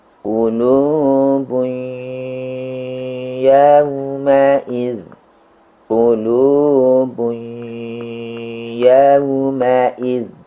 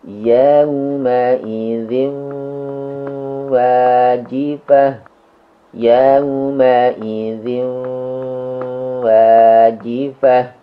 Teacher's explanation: Di kasus ini, sifat dari tanwin yang tidak hilang adalah sifat gunnah atau dengung. Sifat dengung ini muncul di huruf waw dan ya, sehingga bunyi iya-nya dihunnahkan, ditahan 3 ketukan, 3 harakat. Demikian juga pada bunyi W-nya.